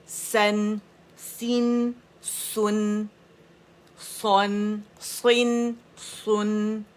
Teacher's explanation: اس کو سین نہیں بنائیں گے, سواد سواد ہی رہے گا, موٹا رہے گا